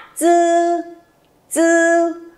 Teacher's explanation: âm chờ, nhưng mà thẳng lưỡi và cái âm thanh nó rít lên một tí. Bởi vì chính cái độ ma sát, cái độ rít dư nó sẽ tạo ra một cái âm đúng, được chưa nhở?